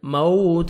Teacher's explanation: Lips کو round میں لے کے جائیں گے تاکہ واو اچھی طرح ادا ہو، نرمی سے ادا کریں گے. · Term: واو لین